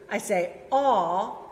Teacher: when I say aw, my jaw is further down than when I said eh.